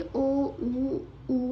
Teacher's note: ओ, उ में व्रत बनता है, ओठों की व्रत नुमा आकृति बनती है